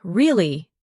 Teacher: Your voice goes up slightly at the end. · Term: Intonation